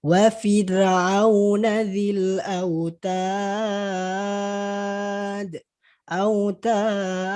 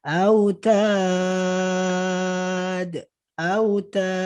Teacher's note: Mati karena waqaf, dia disukunkan karena waqaf. Maka apa? Maka dia dibaca 6 harokat. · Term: mad arid lisukun